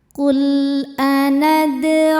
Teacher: Dal sukun ini dihukumi qalqalah sughra karena huruf dal ini sukunnya sukun asli dan ada di tengah-tengah bacaan kita. Maka kita bunyikan memantul dengan pantulan yang kecil. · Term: qalqalah sugro